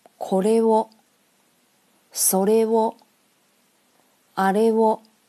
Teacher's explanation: これ、それ、あれ的声调都是零，后面加上助词还是高调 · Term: 声调零